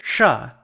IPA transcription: ʂ